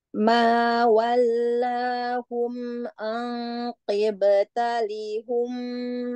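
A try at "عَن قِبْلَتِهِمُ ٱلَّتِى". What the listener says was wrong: Nah, bukan kibta tapi kibla. Kiblatihimullati.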